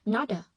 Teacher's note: Not chữ T nối âm với A, chữ T đọc thành đờ bởi vì đứng giữa hai nguyên âm nó đọc là not a, lot of, được chưa?